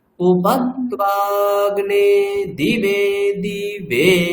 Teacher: দিবে প্রথম দয়ের হ্রস্বইকারে নিচের স্বর, আবার দি উপরের স্বর, তারপর বয়ে নিচের স্বর আছে